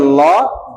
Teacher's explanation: জিহ্বাটা উঠে ল, দুই পাশ দিয়ে বাতাস বের হয়, ল, এই জন্য পার্শ্বিক বর্ণ বলা হয়।